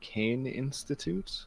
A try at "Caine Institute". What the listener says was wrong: Like, it's not like Kai, it's pronounced K.